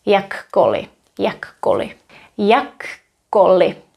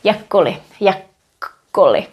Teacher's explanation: It's almost like a silent K, but there is a little bit of space, a little bit of gap when I pronounce it. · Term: double K